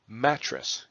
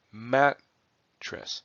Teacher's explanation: where Matt is emphasized stressed and tres is not